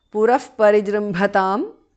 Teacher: visarga changes to upadhmaniya